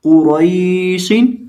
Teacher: इस लफ्ज के अंदर हम क़ाफ को भी और रॉ को भी दोनों को मोटा करके पढ़ेंगे। और ये जो या है ये याए मद्दा की नहीं है, ये याए लीन की है।